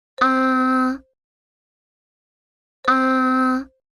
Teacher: It is a high flat sound. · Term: the first tone